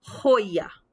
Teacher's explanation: that's coming from the back of my throat the soft palate's vibrating a little bit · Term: hota